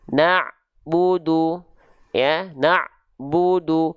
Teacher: Bunyi antara ain sukun dengan bu tidak boleh ada jeda hening.